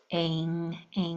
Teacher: In ing, the A sounds like a long A sound. It's just very nasally. So a long A sound can have a very nasal sound to it.